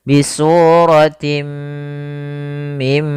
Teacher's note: kita masukkan ke huruf mim dan ditahan gunahnya dua harakat